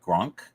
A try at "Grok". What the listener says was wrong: Grok, not Gronk. Gronk is ONK.